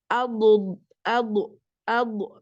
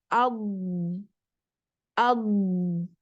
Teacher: Ini huruf DD tidak punya sifat Qalqalah jadi dia ditahan pada makhrjnya lalu dipanjangkan suaranya atau dijalankan ad ad I sampai ujung lidah